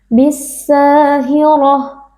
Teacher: yang sebelumnya nya berharakat fathah kita baca panjang dua harakat bissahiroh huruf ro yang fathah kita baca tebal dengan mengangkat pangkal lidah